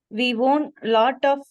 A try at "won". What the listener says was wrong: ஒன்னு படிக்கணும், ஓன்னு படிச்சிட கூடாது. ஓன்னா இதுன்னு நினைச்சுக்குவாங்க. இந்த ஒண்ணும் ஒரே உச்சரிப்பு. வார்த்தை தான் வேற, மீனிங் தான் வேற. ஹோமோஃபோன். இப்படி படிச்சிடக்கூடாது.